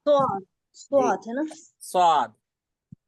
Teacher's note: ज सी स्वाद स्वाद स्वाद स्वाद नहीं कहते ठीक है स्वाद स्वाद जो है हरूफ मुस्तालिया मतलब मोटा हर्फ है इसको पुर पढ़ा जाता है